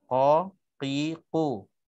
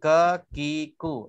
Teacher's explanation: qim tu dalam sikit, kaf, ki tu dia luar sikit